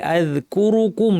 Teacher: কুম অর্থাৎ কুর নরমাল বলার পর আবার ঠোটকে গোল করে কুম বলতে হবে। তাহলে আমরা আলস্য করে পুরা সময়টা যদি ঠোটটাকে গোল রাখি তাহলে আজুকুম শোনাবে। যেটা ঠিক হবে না।